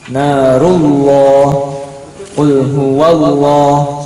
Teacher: lafaz Allah kalau sebelumnya fathah atau sebelumnya dhammah maka bacanya O.